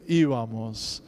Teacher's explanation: the B changing to kind of like a V. It goes from a bilabial stop to a bilabial fricative.